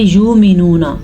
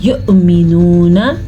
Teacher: یؤمنون، یہاں پہ واو کے اوپر حمزہ ہے، حمزہ کے اوپر ساکن ہے، تو اس کا یہ مطلب ہوا کہ ہم حمزہ ساکن کے ساتھ پڑھیں گے لیکن واو نہیں پڑھیں گے